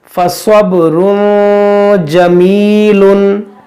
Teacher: स्वाद मोटा करेंगे, हुरूफ मुस्तालिया है, बा में कलकला करेंगे और यहाँ पे या मद्दा है, इसको खींचेंगे।